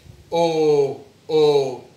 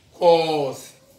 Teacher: notice my lips my lips are rounding and my mouth is open